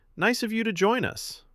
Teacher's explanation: with a tight smile and a flat tone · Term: a jab